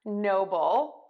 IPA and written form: ˈnoʊbəl (noble)